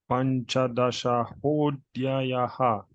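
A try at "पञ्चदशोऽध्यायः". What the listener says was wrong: Panchadashodhyayah. No visarga sound.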